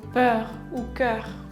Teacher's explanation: le EU et le OEU seront dits comme si on essayait de prononcer le E et le U en même temps